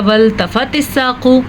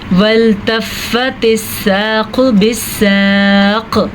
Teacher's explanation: वल्तफ़्फ़तिस साक़ु बिस्साक़, फिर से क़ाफ़ को पुर पढ़ना है और अगर कोई इसको पढ़ेगा वल्तफ़तिस साक़ु तो गलत पढ़ेगा। फ़ा की शद को ज़रूर अदा करना है, तो हम इसको पढ़ेंगे वल्तफ़्फ़तिस साक़ु बिस्साक़, कलकला।